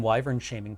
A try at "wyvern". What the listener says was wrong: Wyvern. Yeah, wyvern. It's less the pronunciation, more the emphasis. It's wyvern. I think is how I pronounce it. Instead of wyvern. Wyvern. Wyvern?